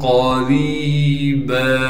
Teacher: क़ाफ को मोटा करके पढ़ेंगे इसलिए कि क़ाफ मोटे हरूफ में से है। रा को आगे याई मद्दा से मिला देंगे और रा को एक अलिफ की मिकदार खींचेंगे।